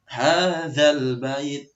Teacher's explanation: za ini seperti tha, jadi lidahnya itu agak keluar dan digigit. Hadzal bait seperti itu, seperti tha, za, tha, zo, itu juga keluar.